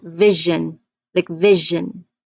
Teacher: it's like the voiced counterpart of sh like shu.